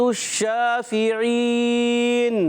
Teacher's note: شین مشدد ہے، ذرا رکیں گے بھی، رک کر پڑھیں گے. اور شین میں منہ میں آواز پھیل جاتی ہے، اس کی صفت کا نام ہے تفشی.